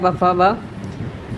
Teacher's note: ये ओष्ठ होता है, प, फ, ब